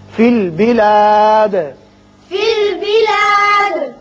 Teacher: دال پر قلقلہ کریں گے اس لیے کہ یہ وقت کی وجہ سے ساکن ہو رہا ہے.